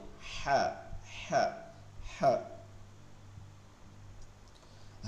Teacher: সিংহ যেভাবে গর্জন করে সেভাবে এই হয়ের উচ্চারণের মধ্যে গম্ভীরতা রাখতে হবে, হ হ। লম্বা হা হচ্ছে গলার মধ্যে নিয়ে পড়তে হবে ফিসফিস আওয়াজে